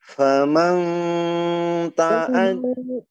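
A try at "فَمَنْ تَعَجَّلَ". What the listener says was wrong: Jangan sampai banyak ya. Jangan bang, jangan sampai banyak dengung, jangan begini, jangan sampai faman ya, jangan sampai demikian, tapi faman mal coba. Jangan bunyinya jangan sampai mang ya bunyinya. Coba untuk membedakan dengan adna karena dia akrab ya.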